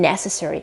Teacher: the accent is not later but it is at the very beginning